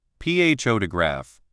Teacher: in the word photograph, the loud part is on the first part